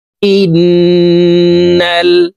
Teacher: হামজা তাশদিদ ওয়ালা নুনের সাথে নাকের বাঁশি থেকে গুন্নাহ করে পড়বো তিন সেকেন্ড পরিমাণ নাকের বাঁশি থেকে গুন্নাহ করে ধরে রাখবো